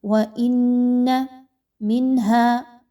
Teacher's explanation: نون ساکن کے بعد ہا کا حرف آ گیا تو آپ نے یہاں پر آواز کو بڑا کلیئر پڑھنا ہے، اظہار کرنا ہے، کسی طرح کا غنہ نہیں کرنا کیونکہ ہا حروف حلقی کے 6 حروف میں سے ہے اور اظہار کا قاعدہ اپلائی ہوتا ہے۔